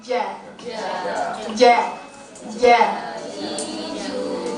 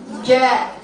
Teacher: Lidah bagian tengah menekan langit-langit atas. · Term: Jim